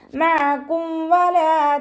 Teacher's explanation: മീം സാക്കിനയുടെ നിയമത്തിലുള്ള ഇൽഹാറാണ് ഇവിടെ വരുന്നത്, ഇൽഹാർ ഷഫവി. മീം സാക്കിനെ വ്യക്തമാക്കി മണിക്കാതെ ഉച്ചരിച്ചു കൊടുക്കുക